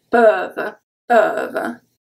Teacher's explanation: EU, because it's closed with the V, it's a closed sound.